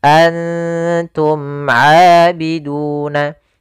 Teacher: ikhfa itu menyamarkan huruf kepada huruf setelahnya, yaitu nunnya disamarkan kepada huruf ta